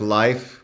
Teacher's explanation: words like life with the monophthong as ah, so using a Southern American pronunciation